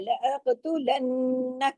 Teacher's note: लेकिन काफ पे कलकला भी होगा, लअक़, हिलाना भी है, लअक़तुलन्नक, नून पे तशदीद है, नून पे बड़ा गुन्ना होगा, अकमल गुन्ना होगा